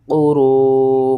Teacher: قاف پیش کو را واؤ مد پیش رو، قرو، 5 الف کے برابر آپ نے اسے کھینچنا ہے